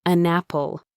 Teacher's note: He was looking for the little pause, the tiny space between an and apple, but there was no space. The N sound at the end of an attached itself to the A sound at the beginning of apple. It became one smooth sound.